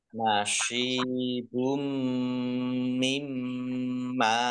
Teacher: dengan huruf mim idgham bihunah idgham masuk Bi dengan ghunah mendengung masuk dengan mendengung yaitu mendengung mim ditandai mimnya ada tasdidnya ditahan mendengung ditahan dua harakat